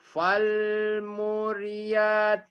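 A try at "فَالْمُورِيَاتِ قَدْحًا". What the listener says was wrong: Pokoknya panjang. Yang panjang dipendekin, yang pendek dipanjangkan. Kumaha ditukur-tukur wae kayak Bu Sumini kemarin. Ya, falmu.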